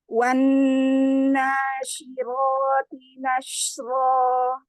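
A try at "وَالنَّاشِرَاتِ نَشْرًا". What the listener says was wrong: Roknya ditebalkan ya. Angkat lagi pangkal lidahnya. Bagian pangkal lidah kurang naik ya. Kemudian bagian belakangnya di belakang pangkal lidah itu luas-luasin. Jadi dia jaraknya itu jauh tinggi. Ro, ini kan naik yang di belakang. Ini kasih ruang.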